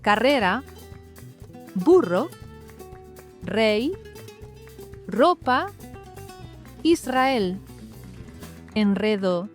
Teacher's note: o som forte do R é aquele que faz a língua vibrar, mas como um pequeno tremorzinho. Imagine que você vai dizer tra de traqueia, mas sem o t fica assim, tra.